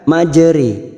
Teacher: Di surah Hud ini ada yang namanya bacaan imalah, yaitu memiringkan bunyi fathah ro condong ke kasroh. Setara dengan kata sore, majeri.